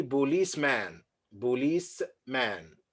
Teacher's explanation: So here, the man here is just schwa